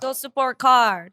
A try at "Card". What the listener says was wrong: Sounds like you call them car. It sounded like you were like, go support car. Card.